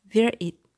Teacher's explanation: Where, W sound and R sound, where, it. जब इसको link किया जाएगा, तो R sound it में चली जाएगी